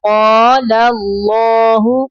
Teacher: پہلا لام باریک پڑھنا ہے اللہ کا لام پر پڑھنا ہے